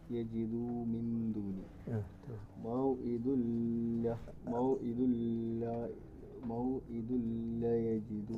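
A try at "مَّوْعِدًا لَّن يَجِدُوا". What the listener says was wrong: ലയ്യ അവിടെ മണിക്കണം നിങ്ങൾ സമയം കുറച്ച് കൂടുതൽ എടുക്കുന്നുണ്ട്. ദുല്ല അത്രയും സമയം എന്ത് ചെയ്യരുത്, എടുക്കരുത്. ദുല്ല അത്രയും സമയം എടുക്കാവൂ. മൗഇദുല്ലയ്യ മൗഇദുല്ലയ്യ ദുല്ല എന്ന് അത്രയും സമയം എടുക്കരുതെന്നാണ് പറഞ്ഞത്. ലയ്യ അത്ര. അതുപോലെ തന്നെ യജിദൂല് കുറേ നീട്ടരുത്, യജിദു ഒറ്റ ലിഫ് നീട്ടി നീട്ടും. ഇല്ല എന്നാണ് നിർത്തുക അവിടെ.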